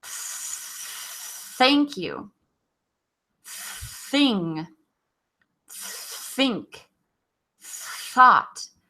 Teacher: each of these words is not using the voice it's unvoiced